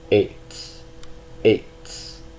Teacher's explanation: The last two, we have an ayin, followed by a sere, which is an E, and a line over it because this is a tone long E, not an A, not a segol, but a sere